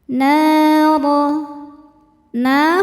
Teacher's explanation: Sebab ada alif yang didahului harakat fathah. Cara bacanya dipanjangkan dua harakat. · hukum tajwidnya mad tabi'i dhahiri sebab ada alif yang didahului harokat fathah. Cara bacanya dipanjangkan 2 harokat. Naro. Ra dibaca secara tafkhim karena berharokat di atas yaitu harokat fathah. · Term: mad thobi'i zohiri